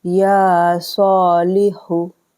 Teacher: या और स्वाद को खींचा हमने, लाम ज़ेर ली, और हाफिज़ हु को नहीं खींचेंगे। इन खरा ज़बर को खींचा हमने 2-2 सेकंड के लिए, और हरकत को नहीं खींचते हैं।